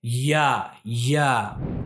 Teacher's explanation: इसका तलफुज़ भी बहुत ही आसान है और इसको जब हम अदा करेंगे जबान का जो बीच वाला हिस्सा है वो तालु से मिलकर अदा होता है। या या और या को जब हम अदा करते हैं तो इसमें थोड़ी सी सख्ती भी होनी चाहिए।